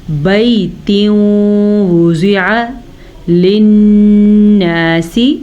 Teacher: نون کا غنہ ادا کر لیجیے گا, نون پہ شد ہے